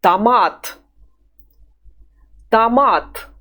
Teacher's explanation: The O is weak because it has not got a stress over it. That is why we say A when we see it.